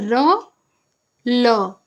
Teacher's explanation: दंत मूल से कौन से निकलती है र ल इसके लिए आप दंत मूल का यूज कर रहे हैं